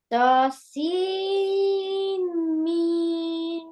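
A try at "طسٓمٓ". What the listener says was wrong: Yeah, this is will not read seen, okay? S-E-E-N. This will read seen because there is seen is joining with the meme. It it's not read with the N, okay? Seam. S-E-E-M. Seam say, okay?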